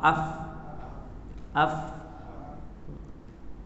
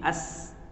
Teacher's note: Kerana lemah pautan pada makhraj ataupun tempat keluar suara huruf-huruf tersebut. Baik, sifat rokhawah ini dapat dikesan dengan adanya suara yang dilepaskan tanpa tersekat-sekat semasa menyebut huruf-hurufnya, sama ada huruf tersebut berbaris ataupun sukun.